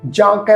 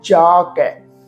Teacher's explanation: ਜਾ ਕੈ, ਇਹਨੂੰ ਜਾਂ ਨਹੀਂ ਪ੍ਰੋਨਾਂਸ ਕਰਨਾ, ਜਾਂ ਜਾਨੀ ਕਿ ਬਿੰਦੀ ਸਹਿਤ ਨਾਸਕੀ ਟੋਨ 'ਚ ਇਹਦਾ ਪਾਠ ਉਚਾਰਨ ਨਹੀਂ ਹੋਵੇਗਾ। ਇਹਨੂੰ ਕਈ ਜਾਂ ਕੈ ਪੜ੍ਹਦੇ ਆ, ਜਾਂ ਕੈ ਪਾਠ ਨਹੀਂ ਹੈ, ਪਾਠ ਹੈ ਜਾ ਕੈ।